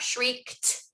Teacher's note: if it ends in a voiceless phoneme then the past tense ed that we add is going to sound like the voiceless t